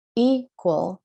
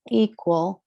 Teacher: the stress and the is on the first syllable. It's long vowel, open syllable. So equal. And then we go equivalent, equality.